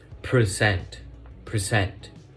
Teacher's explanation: present and as you can notice when we pronounce word present we put like a stress or put like a burden on the part where it says per present as you can notice it is like harder or harsher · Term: word stress